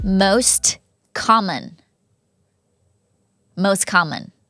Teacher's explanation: เสียงพยัญชนะกับพยัญชนะพอเจอกันเราสามารถลบเสียงได้ค่ะ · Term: ลบเสียงT